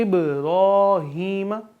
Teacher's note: با پہ جزم ہے تو یہاں پہ قلقلہ لگے گا، آواز ہماری ہمیں دوبارہ سنائی دی جائے گی ، اس طرح، ٹھیک ہے، ابراہیم نہیں بلکہ ابراہیم، وعلی آل